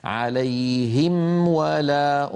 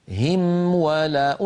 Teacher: ميم بعدها واو أيضا علينا أن نظهر الميم